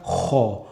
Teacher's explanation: Donc, lorsqu'on va dire la lettre Kha, donc on va gratter un peu aussi le fond de la gorge, comme quand on a la gorge qui est un peu enrouée et qu'on veut se gratter la gorge, qu'on a la gorge qui chatouille, on va faire Kha.